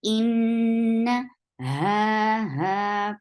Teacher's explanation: ha, from last part of your throat, and it is 2 counts long.